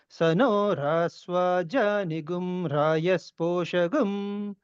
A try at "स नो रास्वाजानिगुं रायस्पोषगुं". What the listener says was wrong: నీ కూడా మీరు అనుదాత్తం చెబుతున్నారండి, అది మధ్యగా చెప్పాలి.